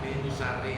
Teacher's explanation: min syarri itu minnya jangan dibunyikan nun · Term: ikhfa